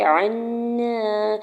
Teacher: عین کے زبر کو نون مشدد کے ساتھ ملاتے ہوئے غنہ کرنا ہے، اور نون کے زبر کو अलिफ पर नून के ऊपर ज़बर है तो अलिफ मद्दा भी होगा।